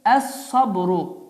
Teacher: Yəni əl sabrı yox, ləm hərfi oxunmur. Və bu hərf isə şəddələnərək əsabru deyərək oxunur. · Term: El-lamu şemsiye